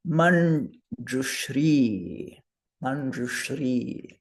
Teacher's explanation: And that N, the nasal, is second varga. So it's palatal